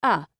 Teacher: Two reduced vowel sounds in English are uh and the most common reduced vowel sound is uh called the schwa sound. When you pronounce it, keep your mouth relaxed and halfopen and your tongue in the middle position and flat. Unstressed a, e, o, and u are often reduced to the schwa sound.